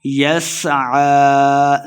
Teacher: عین کے اوپر کھڑی زبر ہے تو اس کو دو حرکات لمبا کرنا ہے